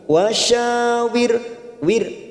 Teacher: ra sukun lagi didahului kasroh, kita baca tarkik tipis wir, artinya biar kita tersenyum.